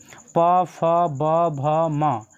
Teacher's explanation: प फ ब भ म तो ये आप बिना ओष्ठ को सटाए हुए नहीं बोल सकते हैं · प, फ, ब, भ, म, तो ये सभी उच्चारण जो है ओष्ठ की मदद से होता है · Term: ओष्ठ वर्ण, ओष्ठ्य वर्ण